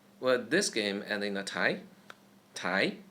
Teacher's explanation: The second tone goes upwards